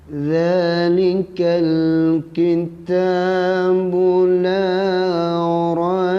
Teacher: Mesti melantung ba di sini.